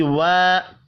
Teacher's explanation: وا الف مدہ ہے، ایک الف کے برابر کھینچ کر پڑھیں گے